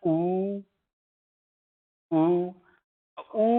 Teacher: ऊ बोलोगा तो आपके होठ जो है वो गोलाकार हो रहे हैं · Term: ओष्ठ स्वर